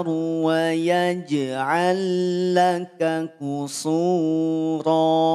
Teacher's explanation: Lam yang pertama masukkan pada lam yang kedua. Lam yang pertama leburkan pada lam yang kedua, nol harokat tanpa ditahan. Ya, jangan ditahan. · Lam sukun bertemu dengan huruf lam, nol harokat, idgham mutamatsilin, leburkan. Lam yang pertama masukkan pada lam yang kedua.